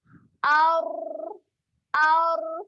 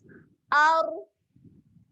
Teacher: Huruf ra, makhrajnya hujung lidah berjumpa dengan gusi atas. Naikkan lidah kita ke atas.